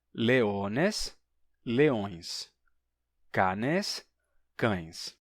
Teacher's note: Às vezes fica a nasalidade na vogal